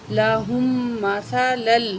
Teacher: ہم میم کے ساتھ ملائیں گے اور میم میں غنہ کر کے پڑھیں گے